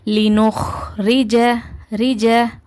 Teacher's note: லினுஹுரிஜுன்னு ஓதக்கூடாது ஏன்னா இது கல்கலாவுடைய எழுத்து கிடையாது அதனால லினுரிஜரிஜ ஓகேவா இத வந்து ரிஜன்னு ஓதக்கூடாது ஏன்னா ராக்கு கீழ ஜர் இருக்குது அதனால இத வந்து மெல்லினமாதான் உச்சரி க்கணும் நீங்க உங்களோட தாடைகளை கீழ் நோக்கி தாழ்த்தாம இருந்தீங்கன்னா ரீனு ஹெவியா வரும்.